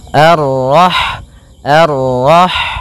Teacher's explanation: Rah di sini ada huruf ha ha yang berharakat Sukun dan sifat ha itu yang paling mencolok adalah sifat hamasnya yaitu mengalir n nafas ketika kita membacanya arah arah kemudian dan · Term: sifat hamesnya